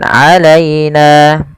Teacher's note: lembutkan pelafal ya yang didahului dengan fathah karena ia bacaan lin